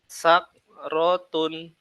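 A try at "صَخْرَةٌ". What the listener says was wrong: Ayo, hamasnya nampakkan. Sakrotun. Hamasnya masih kurang nampak.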